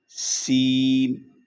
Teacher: سین کی آواز میں بھی سیٹی اور سختی کی آواز ہوگی